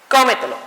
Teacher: su posición fuerte recae en la sílaba antes de la antepenúltima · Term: sobreesdrújulas